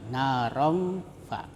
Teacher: Ya, ikhfa itu samar-samar. Jadi cara membacanya itu suara tanwin masih tetap terdengar, ya, tetapi samar antara izhar dan idgham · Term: ikhfa hakiki